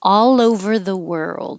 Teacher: All over the world. The L will connect to the O and make all over the world.